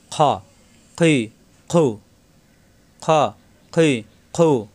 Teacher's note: মোটা হবে, কিন্তু আকার প্রকাশ পাবে না। খ জবরের আকার প্রকাশ পাবে না।